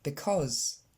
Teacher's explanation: L'accent tonique tombe sur la deuxième syllabe, cause, et le premier c'est pas un i comme vous avez tendance à le dire, because, mais c'est un e